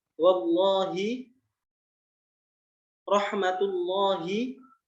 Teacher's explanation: Kalau sebelumnya harokatnya dhammah atau fathah, contohnya wallahi, rahmatullahi, itu lafzul jalalahnya dibaca itu tebal